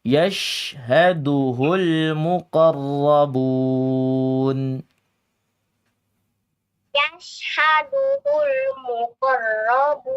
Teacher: shinnya kurang tebal ya. Ini tafasyi sifatnya.